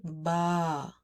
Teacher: Instead of saying ba you will say ba you will stretch the sound with a double a at the end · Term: mada letter